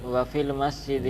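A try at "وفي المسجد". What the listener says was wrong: وافل، وا چھوڑ رہے ہیں آپ.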